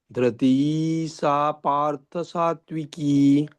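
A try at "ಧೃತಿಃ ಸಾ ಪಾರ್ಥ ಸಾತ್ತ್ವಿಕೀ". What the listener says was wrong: ಧೃತಿ ಧೃತಿ ಎಳಿಬೇಡಿ, ದೀರ್ಘ ಇಲ್ಲ ಅಲ್ಲಿ. ಧೃತಿ ಸಾ ಪಾರ್ಥ ಸಾತ್ವಿಕಿ. ಸಾತ್ವಿಕಿ ಕಿಹಿ ಇಲ್ಲ, ಸಾತ್ವಿಕಿ.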